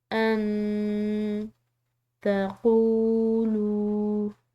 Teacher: نون ساکن ہے، اس کے بعد تا ہے حروف خفا میں سے، تو اس کو ہم نے مخفی کر کے پڑھنا ہے. ان تقولوا، قوف اور واو دونوں کے بعد یہ لام، قوف اور لام ان دونوں کے بعد جو ہے یہ واو ساکن آ رہی ہے، تو اس کو ہم نے لمبا ادا کیا.